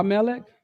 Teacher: the emphasis is at the mem not the final letter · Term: accent